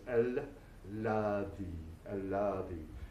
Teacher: This has a shadda on the lam, on the letter L, so it's doubled.